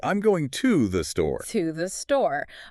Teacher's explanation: In connected speech, that clear oo vowel completely collapses into a schwa.